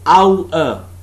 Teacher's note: perceived as being made up of three differing vowel qualities